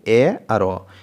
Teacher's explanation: এই স্বরধ্বনি দুটি উচ্চারণের সময় জিহ্বার অগ্রভাগ কিছুটা নিচের দিকে থাকছে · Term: নিম্ন মধ্য